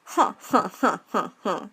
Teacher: you find nasality in posed laughter